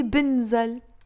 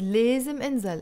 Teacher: Notice again here, I didn't say بنزل. I said لازم انزل. I dropped the ب.